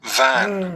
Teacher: Top teeth on bottom lip, ऊपर वाला दांत, इसके उच्चारण में ऊपर वाला, टॉप टीथ ऊपर वाला दांत, ऑन माने पर, बॉटम माने नीचे वाले लिप के ऊपर।